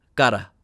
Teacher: And this sound right here is called a flap, which is a very quick movement of the tongue